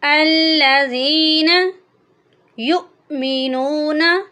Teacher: یہاں پر جو اکثر غلطی ہو جاتی ہے وہ یہ ہے کہ حمزہ کی جگہ لوگ عین کو پڑھ دیتے ہیں یا یہاں پر جھٹکا ہی نہیں دیتے، کیونکہ حمزہ کے اوپر ساکن ہے، جب یا کو ہم حمزہ کے ساتھ ملائیں گے تو یہاں پر ہلکا سا جھٹکا دے کر پڑھیں گے، جیسے کہ یا حمزہ پیش یو، یو نہیں پڑھیں گے، یا واؤ پہ یو وہ تو بن جائے گا، تو اس لیے یہاں پہ ہم یا کو حمزہ کے ساتھ ملا کر پڑھیں گے اور ہلکا سا جھٹکا دیں گے۔